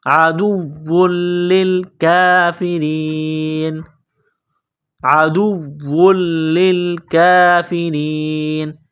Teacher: واو مشدد ہے، لام مشدد ہے، سختی کریں گے دونوں میں